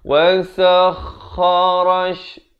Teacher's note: Kha di hujung kerongkong.